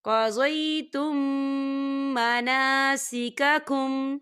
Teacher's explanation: یہاں پر میم ساکن ہے اور میم ساکن کے بعد میم آ رہا ہے تو یہاں پر ادغام شفی ہو رہا ہے اور یہاں پر ہم غننے کے ساتھ پڑھیں گے